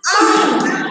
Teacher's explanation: जब मैंने आंख प्रयोग किया तो मेरे नाक और गले से कंपन हो रहा है, दोनों तरफ का यहाँ पे प्रयोग हो रहा है, तो समझ जाते हैं कि अनुनासिक होना चाहिए। · तो जब हम इसका उच्चारण करते हैं तब हमारी नाक और हमारे गले से कंपन होता है, कंपन यानी हिलना, थोड़ा सा शेक होता है बोलते समय, उन वर्ड्स को बोलते समय, ठीक है। नाक और गले दोनों से होता है उनका उच्चारण, एक से नहीं बल्कि दोनों से। तो वे कौन से शब्द है, जैसे कि आंख ले लीजिए, आंख।